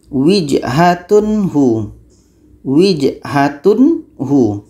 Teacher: Tanwin harus jernih, hu juga harus jernih, dan di sini tidak ada hum. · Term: izhar halqi